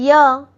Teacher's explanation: य का उच्चारण तालू से होता है।